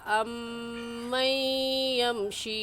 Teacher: अमन पर मीम मुशद्दद है इसलिए गुन्ना करेंगे